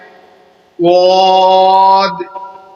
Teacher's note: سیٹی کی آواز نکالتے ہوئے اسے موٹا کر کے پڑھنا ہے